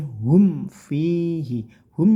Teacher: mim sukun bertemu Fa itu namanya izhar syafawi tidak boleh dibaca dengung Cukup jelas saja singkat terus